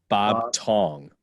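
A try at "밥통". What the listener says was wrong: So there's no B in Korean. It's like P so it's like pop. Pop Tong. Tong.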